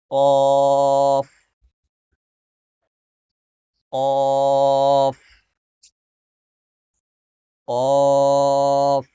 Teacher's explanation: জিহ্বার গোড়া তার বরাবর উপরের তালুর সঙ্গে লাগিয়ে উচ্চারিত হবে